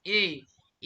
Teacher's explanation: এ বলার সময় আপনাদের জিহ্বা কিন্তু সামনের দিকে আছে।